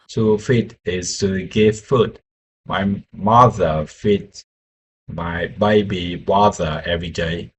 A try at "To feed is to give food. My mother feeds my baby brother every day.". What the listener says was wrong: Okay, to feed, good one. And that sentence is perfect.